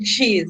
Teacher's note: The airflow is obstructed and then released without making the vocal fold vibrate.